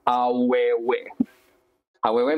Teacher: the W is used to glide the vowels